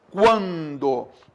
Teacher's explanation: Quando, ditongo crescente, semivogal mais vogal. · esse U é semivogal e o A foi nasalizado